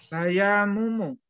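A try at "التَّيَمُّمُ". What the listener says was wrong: Ada alif lamnya, Pak. Jangan lupa. Iya, enggak ada yang panjang di situ, Pak. Jangan lupa. Enggak ada yang panjang. Enggak ada yang panjang, enggak ada yang panjang.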